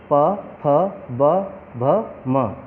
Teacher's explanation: इन सभी व्यंजनों में हमने होंठों का प्रयोग किया है। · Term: ओष्ठ व्यंजन